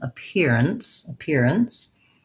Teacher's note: my ns syllable almost has no vowel, so it's just kind of like an ns